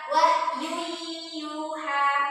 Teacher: Jadi memasukkan suara tanwin kepada huruf ya.